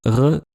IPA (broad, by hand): ʁ